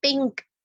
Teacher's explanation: اب آپ دیکھیں پنک میں ہم کیا کہہ رہے ہوتے ہیں، نون کی آواز کو چھپا رہے ہوتے ہیں اور کیف کے قریب لے جا رہے ہوتے ہیں